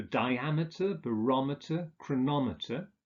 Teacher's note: With words ending in meter, the stress is on the second syllable.